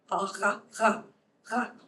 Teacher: That's a uvular fricative.